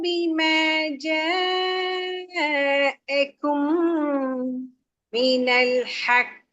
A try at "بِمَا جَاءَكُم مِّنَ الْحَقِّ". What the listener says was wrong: من الحق பிழையே حقي வரலையே சவுண்ட்